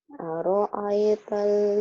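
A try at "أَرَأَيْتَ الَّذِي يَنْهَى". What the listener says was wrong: aro'ai. Jangan aro'a. Aro'ai, nggak ada yang panjang.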